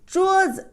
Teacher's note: See, the rule, always the end, the second character, you give a light touch tone.